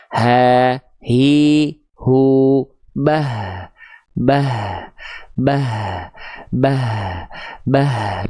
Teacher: huruf H besar dilafalkan dari pangkal tenggorokan